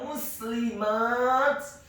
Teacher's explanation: Kata muslimat, huruf mimnya dibaca dhammah 1 harokat, huruf sinnya dibaca sukun, huruf lamnya dibaca tipis, tarqiq, kasrah 1 harokat